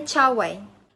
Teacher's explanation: palatal ini adalah sebagai alat artikulator pasif, sedangkan artikulator aktifnya ialah hujung lidah atau tengah lidah